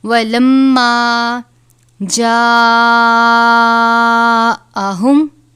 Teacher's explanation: بڑی مد ہے، 5 الف کے برابر اس کی مقدار ہے